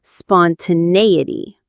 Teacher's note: The main stress is on the nay syllable.